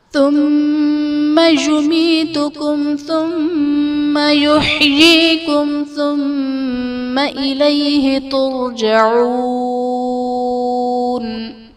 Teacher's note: ثم میں میم مشدد ہے، یہاں پر غنہ کر کے پڑھیں گے۔